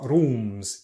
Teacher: And the vowel sound in rooms is quite back, ooh. Also, you might hear people tapping the R